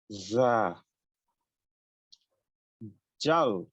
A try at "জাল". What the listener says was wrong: এটা জাল, জল না, জাল।